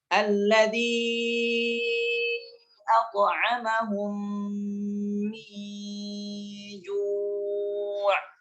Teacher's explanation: memasukkan mim sukun pada mim berharakat sehingga menjadi mim yang bertasydid dan dibaca dengan dengung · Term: idgham mimi